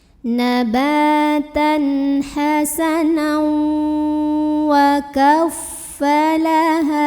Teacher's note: Nabatan hasanan, hukumnya idgham bi gunnah karena tanwin fathahnya ketemu sama waw. Jadi ini bacanya masuk langsung ke waw ya, hasanau sambil tahan dengung.